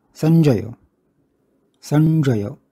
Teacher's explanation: म्हणून आणि बघूया संजय संजय स आहे त्याच्यापुढे अर्धा ज्ञ आहे त्याचा मागच्या वर म्हणजे स मधल्या अ वर आघात होतो त्यानंतर अल्पयती किंचित वेळ आपण थांबतो आणि मग जय